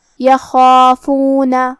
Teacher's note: مد الف اپنے پیچھے والے حرف کا حکم لیتا ہے تفخیم میں اور ترقیق میں، تو ہم خا کو اور مد الف کو دونوں کو بھاری آواز میں پڑھیں گے · کلمت یخافون یہاں حرف الخا ہے. خا کی ادائیگی حلق کے اوپر والے حصے سے ہے. خا حروف تفخیم میں سے بھی ہے، تو ہم یہ حرف کو بھاری آواز میں پڑھیں گے.